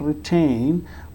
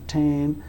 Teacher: in the word retain, we can find the t sound is occurring in the beginning of the second syllable, tain, and it is being pronounced with a puff of air. So this is called aspirated t.